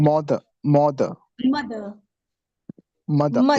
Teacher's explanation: We are not supposed to pronounce R, so it would be mother and mother.